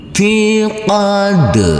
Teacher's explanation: huruf Dal yang bersukun ini wajib kita pantulkan karena ini adalah bacaan Qalqalah